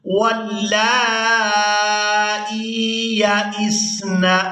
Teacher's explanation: حمزہ کو اس یا ساکن کے ساتھ ملائیں گے تو کھینچ کر ادا کریں گے